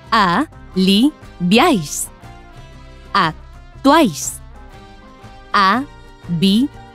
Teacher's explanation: en todos estos casos, las tres vocales se pronuncian en la misma sílaba, porque forman un triptongo.